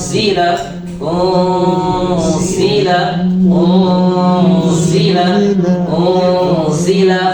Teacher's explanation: Hati-hati dengan makhrajnya nun. Jangan sempurnakan di makhrajnya nun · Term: Iqfa hakiki